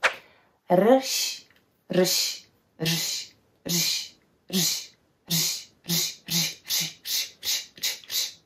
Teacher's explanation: Some people like to use this technique where they start pronouncing R, but then they cut it off with a sh or j sound